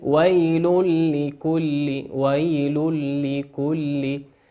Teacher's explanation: تنوين أتى بعده حرف اللام، وقلنا حرف اللام من حروف الإدغام بغير غنة